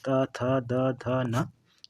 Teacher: दंत की बात करें तो ता वर्ग के पूरे वर्ड जो होते हैं वो दंत में आते हैं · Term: दंती वर्ड